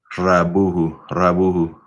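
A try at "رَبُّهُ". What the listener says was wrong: Rabbuhu. There's a shadda there, right? Rabbuhu. You said it a little bit, but just making sure. Rabbuhu.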